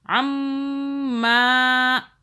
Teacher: میم پہ ہم نے غنہ کیا کیونکہ میم کے اوپر تشدید ہے